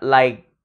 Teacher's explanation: Như là like, tôi nghẹn ở cổ luôn rồi đó. Like, hơi bị chặn lại ở cổ hoàn toàn, giống như ai đó bóp cổ mình lại vậy